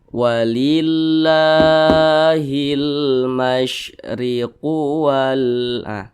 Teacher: maka kalimat Allah ini dibaca panjang. Panjangnya itu 2 harakat atau kira-kira 2 ketukan. Namanya mad tabi'i.